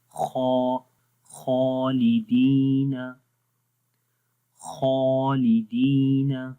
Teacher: تو یہاں خا موٹا ہے تو اس وجہ سے الف بھی کیا ہوگا؟ موٹا پڑھا جائے گا۔ تو پڑھیں گے خا، خالدین، خالدین۔